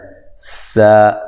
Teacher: سا سین کو باریک سیٹی سے اور الف مدہ کے قائم مقام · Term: مد اصلی